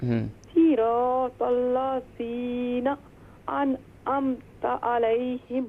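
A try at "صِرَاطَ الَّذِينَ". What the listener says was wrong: सिरातल नहीं, देखें सौद और सीन में फ़र्क करें। सौद होगा फुल माउथ, सिरातल लज़ीना।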